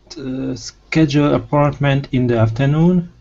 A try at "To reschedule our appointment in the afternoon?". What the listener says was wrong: Almost. Okay. So don't start it at the very beginning of afternoon. In the afternoon, because then it starts to go up too much. So we want to start right here on noon. So to reschedule our appointment in the afternoon.